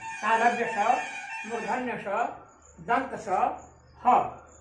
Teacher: इनके उच्चारण में मुख से गर्म श्वास वायु रगड़ खाती हुई निकलती है, अतः इन्हें उष्ण व्यंजन कहा जाता है। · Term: उष्म व्यंजन